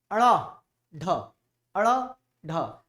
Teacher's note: इन वर्णों के उच्चारण में जीभ ऊपर उठकर झटके से नीचे आता है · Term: उक्षिप्त व्यंजन